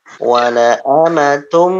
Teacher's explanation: Idgham bi gunnah. Dimasukkan, tanwinnya dimasukkan, kemudian didengungkan. Tum itu masuk, tum, kemudian mimnya ditahan.